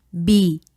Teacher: En esta palabra, el acento lo tiene la sílaba cle. Esta es la sílaba tónica.